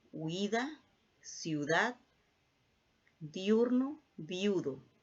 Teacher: también se puede formar un diptongo con dos vocales cerradas distintas